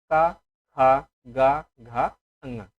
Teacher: ये कंठ से बोले जाते हैं। जब बोलेंगे का तो कंठ से आवाज निकलती है